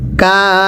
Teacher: কা এই কাফেরের মধ্যে চার আলিফ টানতে হবে। কেন? হরফের উপর মোটা চিহ্ন থাকলে চার আলিফ টানতে হয়।